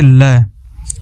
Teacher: जिस वर्ण के उच्चारण में जिह्वा मसूड़ों को छूती है और हवा का प्रमुख वेग जिह्वा के आसपास या अलग अलग से निकल जाता है, उसे पार्श्विक वर्ण कहते हैं।